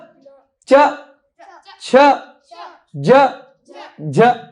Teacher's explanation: च, दांत से जरा सा ऊपर तालू पे टकराई थी